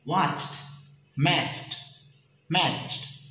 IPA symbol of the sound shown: t